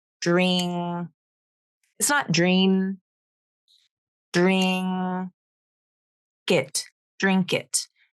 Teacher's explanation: like an NG so those are two different consonants in English the NG is where the tongue moves back the N is made with the front of the tongue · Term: NG sound